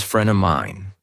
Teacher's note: Friend of mine becomes friend of mine where of is barely there. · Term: dropped sounds